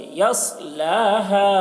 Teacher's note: صوت کو موٹا کر کے، یصلاها، ہا کو زیادہ کھینچیں گے، مد ہے